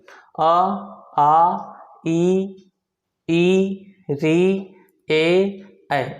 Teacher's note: इनको आप बोल के देखिए तो आपका जो ओष्ठ होगा वो गोल नहीं होगा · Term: आवृत्ताकार स्वर